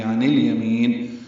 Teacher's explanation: عن الیمین نون کو لام سے ملانا ہے، یا کو جلدی پڑھنا ہے